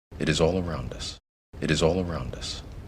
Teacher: the energy goes up to all and then it falls away from all it is all around us a big curve up and down